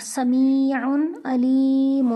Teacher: یہاں پہ دیکھیں عین پر تنوین ہو رہا ہے، لیکن آگے تنوین کے بعد حروف حلقی میں سے عین آ گیا، اس لیے یہاں پر غنہ نہیں ہوگا، اس کو ظاہر کر کے پڑھیں گے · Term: حروف اظہار